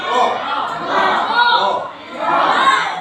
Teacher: ujung lidah kita menyentuh langit-langit atas itu